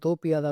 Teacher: குற்றியல் நுகரத்தில் உள்ள உகரம் இகரமாக மாறும் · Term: குற்றியல் லிகரம்